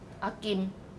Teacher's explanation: Did you see my lips when I, at the last syllable of akim, I closed my lips, right? Because it was ended with an M sound. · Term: final M